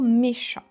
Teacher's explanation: The T, you don't pronounce it. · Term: silent letters